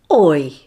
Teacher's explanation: This glide begins in the mid-back place in the mouth. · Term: diphthong oi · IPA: /ɔɪ/